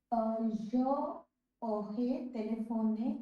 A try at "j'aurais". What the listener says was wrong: So when you mix the two up, je and aurais, how do you get me the sound? J'aurais téléphoné.